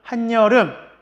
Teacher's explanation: 한 플러스 여름, 한여름 해서 니은이 첨가되는 경우를 볼 수가 있네요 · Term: 니은 첨가